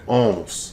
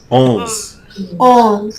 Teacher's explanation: instead of your tongue coming up to the roof of your mouth for an N sound, it's still open, but it's almost like you're closing the N off with your nose rather than with your tongue, if that makes any sense. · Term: nasal